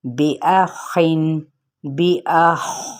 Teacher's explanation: یہاں پہ قلقلہ نہیں ہوگا بلکہ یہ حروف مستعلیہ میں سے ہے، خا، تو اسے ہم نے پر پڑھنا ہے